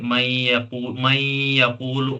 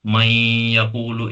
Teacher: नून को या के साथ मिलाकर पढ़ रहे हैं